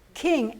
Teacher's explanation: You don't really hear the G sound. You don't pronounce king, G.